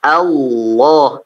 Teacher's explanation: Posisi yang ditebalkan adalah lamnya. Hamzahnya tidak. Ya, hamzahnya tidak, sehingga hamzah itu tidak boleh ditebalkan.